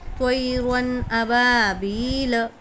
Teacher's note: تو یا زبر توئی ہے نا، یا ساکن سے پہلے زبر ہے، یا لین ہوگا، یا لین کو نرم آواز کے ساتھ جلدی ادا کریں گے۔